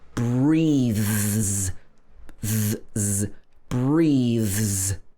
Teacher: when the th is voiced, so your vocal cords are moving, like breathe, then the s is pronounced z